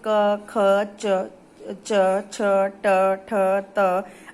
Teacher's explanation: जिन व्यंजन वर्णों के उच्चारण में केवल श्वास का प्रयोग होता है वो होते हैं, जो स्वर तंत्री में कंपन नहीं होता वो होते हैं अघोष व्यंजन, यानी कि इनके उच्चारण में सिर्फ सांस का प्रयोग हो रहा है, इसमें स्वर तंत्री में कंपन नहीं हो रहा है · जैसे क, ख, च, च, छ, ट, ठ, त। आप देखेंगे इन व्यंजनों को बोलने में कोई भी वाइब्रेशन नहीं हो रहा है